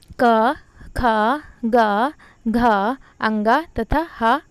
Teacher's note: इनका उच्चारण कंठ के माध्यम से होता है, इसीलिए इन्हें कंठ व्यंजन कहते हैं